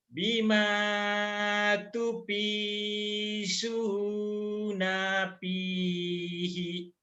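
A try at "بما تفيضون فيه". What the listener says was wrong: Bima jangan tupisu ya, tupildo. Bima tufiduna fihi. Bima tufiduna fihi. tufidu panjang.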